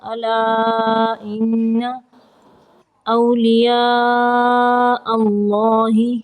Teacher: الا ان، نون مشدد کا غنہ ہوگا